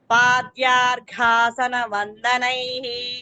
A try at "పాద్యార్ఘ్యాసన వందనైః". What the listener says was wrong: పాద్యార్ఘ్య యావత్ అక్కడ యావత్ కూడా ఉంది.